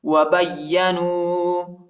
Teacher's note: با کو یا کے ساتھ ملائیں گے، یا کو شدت کے ساتھ سختی کے ساتھ پڑھیں گے